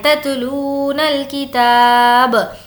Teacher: تا کو کھینچیں گے کیونکہ اس پر کھڑا زبر ہے